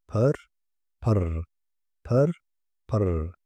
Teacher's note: Vurguluda iki R sesi telaffuz ediliyormuş gibi seslendirilir.